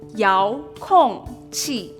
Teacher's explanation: 遙 (yáo) with a second tone and 控 (kòng) with a fourth tone